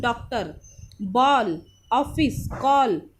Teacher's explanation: ये जो आगत स्वर है ये हमेशा इंग्लिश के जो शब्द होते हैं उन्हें हिंदी में बोलते हैं, तब इसका यूज़ होता है। यह आ और ओ के बीच की ध्वनि है।